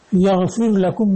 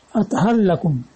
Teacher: یعنی رے کو لام کر کے ادغام